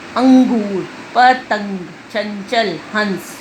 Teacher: अनुस्वार यह अनुस्वार कहलाता है। इसका उच्चारण करते समय श्वास केवल नाक से निकलता है।